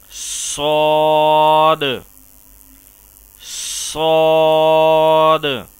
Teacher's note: صاد کو بھی زا اور سین کی طرح دانتوں کو بند کر کے سیٹی کی آواز نکالتے ہوئے موٹا اور پر کر کے ادا کیا جائے گا